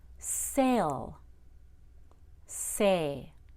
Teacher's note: you should add a Y and a schwa sound before an L